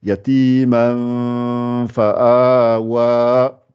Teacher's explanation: pour la sortir, c'est l'extrémité des dents du haut avec l'intérieur de la lèvre du bas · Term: la sortie